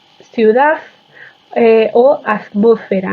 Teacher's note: es posible que se realice una interdentalización